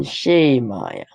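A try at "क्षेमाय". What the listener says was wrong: Kshemaya. Kshemaya. No, it is the kshemaya. So it is ksha, last letter of the consonants. Ksha, kshemaya.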